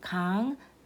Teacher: the consonant 이응 in the final position is pronounced as 응